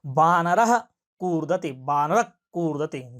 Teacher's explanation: वह जो विसर्ग झटका लग रहा है जीवा के मूल में, वह जीवा मूलीय है।